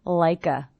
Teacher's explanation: I hear the K linking to the schwa